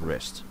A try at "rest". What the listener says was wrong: Rest, not wrist, rest.